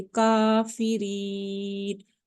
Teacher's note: ये का फ्लैट है, इसको मोटा नहीं करेंगे, इसको हम फ्लैट ही रीड करेंगे, यानी बारीक पढ़ेंगे, काफिरीन। रीन के आगे या मद्दा है, वन फिंगर हम इसको स्ट्रेच रीड करेंगे।